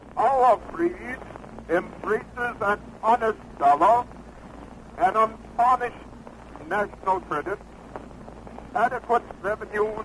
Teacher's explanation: environment but when we listen to his speech we find that he spoke with a mixture of trilled RS tapped RS and Modern Standard English RS